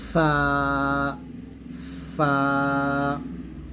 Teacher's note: দাঁতের আগা নিচে ঠোঁটের পেটে লাগিয়ে ফা উচ্চারণ করতে হবে পাতলা করে